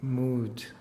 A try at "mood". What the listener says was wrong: You're saying a T instead of a D. That's another thing you're doing. Which basically, your problem is not the vowels. Your problem is the consonants.